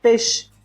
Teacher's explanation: Geralmente as pessoas falam peixe, engole esse I. Ele se torna tão leve que as pessoas acabam formando aí uma variação.